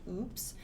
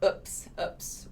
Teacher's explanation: you might hear oops with like a long oo sound oops or you might hear a short one